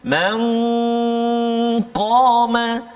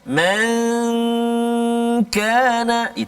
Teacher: huruf qaf tebal, huruf kaf tak tebal, jangan dua-dua sama bunyi dia